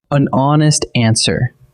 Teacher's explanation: The word honest begins with the letter H, but that H is silent, so honest actually opens with a vowel sound. A vowel sound calls for an, so the answer is an.